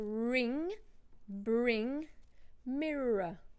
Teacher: pronounce all the R's that are written in the word so in a non-rotic accent you would only hear the R's if they're followed by a vowel